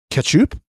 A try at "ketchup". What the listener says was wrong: Ketchup. It's ketchup. No, you're saying cat. Ketchup. Ketchup. it's not cat. It's not a cat. It's a catch. Ketchup.